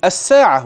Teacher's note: أبدلنا التاء المربوطة هاء عند الوقف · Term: الإبدال عند الوقف